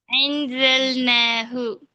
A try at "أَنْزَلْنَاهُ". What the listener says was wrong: அன் தொண்டையில் முன்னு கொண்டு வாங்க. நீங்க அதாவது ஆனாகி தானே ஆ சொல்லி பாருங்க. சவுண்ட் எங்கேருந்து வருது? அந்த இடம்தான் உச்சரிக்கணும். அதை பண்ணிக்கணும். அ அந்த இடம் மாறப்படாது. நீங்க என்ன செய்யணும், ஆன்னு சொன்னதோட பணிச்சு சரிவா கீழ் நோக்கி உச்சரிங்கன்னு சொன்னதோட என்ன செய்றீங்க? நீங்க இப்ப ஆண்டு சொன்ன இடத்தை விட்டுட்டு இன்னும் கொஞ்சம் பின்னுக்கு போறீங்க.